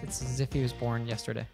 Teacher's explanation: the S from it connects onto as, it's as, then the end of as connects onto if, as if, the end of if connects onto he, if he, was has that schwa sound, so it's also a reduced word. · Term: linking together